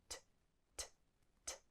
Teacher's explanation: Letter T is a consonant, and you make the sound for letter T by taking the tip of your tongue and putting it on the roof of your mouth and blowing out short bursts of air